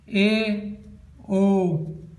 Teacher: ऐदृत स्वर क्या होता है इसमें हमारा मुंह आधा बंद होता है, अर्धवर्त स्वर में हमारा मुंह आधा बंद रहता है